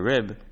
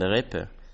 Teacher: The High German consonant shift did devoice b to p